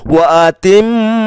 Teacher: Kita perhatikan wa atimmu yang dicetak warna kuning, kita menemukan mim tasdid, ya, mim tasdid. Maka mimnya di sini dibaca dengung, ditahan. Wa atimmu, ya, wa atimmu ditahan 2 rakaat.